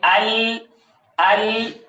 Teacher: تو یہ لام اور را میں لام کا انحراف دیکھیے کہ آواز پیچھے سے آ رہی ہے اور پھر زبان کے درمیان سے اطراف کی طرف، طرف کی طرف، دونوں طرفین کی طرف جو ہے وہ اس کی آواز مائل ہو رہی ہے۔ لام کی ادائیگی میں آواز زبان کی وسط سے دونوں اطراف کی طرف مائل ہو جاتی ہے